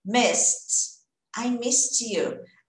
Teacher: Quando eu jogo no passado, ele vai ter esse som de T, o ED eu ignoro completamente.